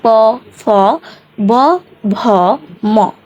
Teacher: এখানে যখন প উচ্চারণ করছি তখন নিচের ঠোঁটটা আমাদের উপরে ঠোঁটের সাথে লাগতেছে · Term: ওষ্ঠব্যঞ্জন